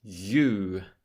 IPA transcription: jˈuː